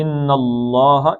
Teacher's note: اللہ کا لام موٹا پڑھنا ہے، پیچھے زبر آگے